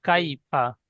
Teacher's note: ألم ترى كيف কাই বলে টান দিচ্ছেন, কাই টান হবে না, ফা টান হবে না